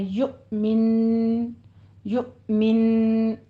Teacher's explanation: غنے کے ساتھ وقف کرنا ہے اور یو پہ جھٹکا ہے